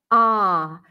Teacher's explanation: open a sound as in the word father or Spa ah so the lips are not rounded you drop your jaw pull the lips back a bit